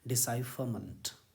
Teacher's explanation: British English में बोलेंगे तो आर का साउंड आप छुपा सकते हैं, साइलेंट कर सकते हैं.